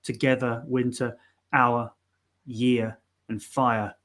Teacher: they just end with that schwa sound